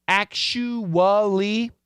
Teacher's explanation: sound actually some people like to do a ch sound but in daily english it's gonna be an sh sound